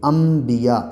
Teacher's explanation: حمزہ اب یہاں پہ کیا ہے، نون ساکن ہے، یعنی نون کے اوپر جزم ہے، جزم والا نون کے اوپر کیا ہے، جزم ہے، اور نون ساکن کے بعد با ہے، تو اب نون کو میم سے بدل کے پڑھیں گے، انبیاء۔ یہ نون نہیں، یہ حمزہ ہے نا، اس کو میم سے ملائیں گے۔